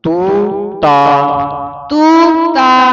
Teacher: ਇਥੇ ਕਈ ਟਿੱਪੀ ਲਾ ਕੇ ਉਚਾਰਨ ਕਰ ਜਾਂਦੇ ਨੇ ਤੂੰ ਟਿੱਪੀ ਤੋਂ ਰਹਿਤ ਹੈ